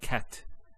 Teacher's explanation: the T doesn't have any vowel associated with it it's actually just a stop on the T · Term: sukoon